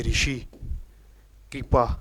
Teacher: ये छोटा है, छोटा री है, इसका ये अवृत मुखी है, बोलते वक्त हमारे होठ क्या है, एक वृत्त के रूप में न आकर फैलाव के रूप में आते हैं, जैसे ऋषि, कृपा, क्रिय है। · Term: अवृत्त मुखी